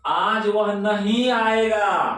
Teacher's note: तो नहीं पर जोर पड़ा है